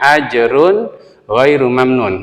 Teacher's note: Gin contohnya ajrun girhairu mamnun nah ini tanwin bertemu dengan gain tanwinnya harus dibaca jelas karena apa hukumnya izhar